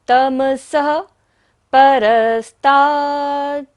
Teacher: स पर विसर्ग है, सारी सांस को यहाँ पर विसर्जन करना है।